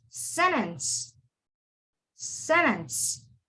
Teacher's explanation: the t is not pronounced it's sentence